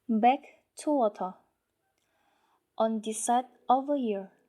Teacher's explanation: So for the first type is linking with the phoneme R does not appear in the final syllable, so it indicates that we must omit the R sound in the final syllable. And we have to pronounce it not clearly.